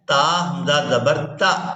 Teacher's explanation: تا کو حمزہ ساکن کے ساتھ ملائیں گے تو جھٹکے کے ساتھ ادا کریں گے